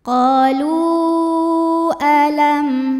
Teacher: Hamzahnya alif dengan harokat fathah pada kata alam. Maka lam dipanjangkan boleh 4 boleh 5 harokat. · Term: mad jaiz munfasil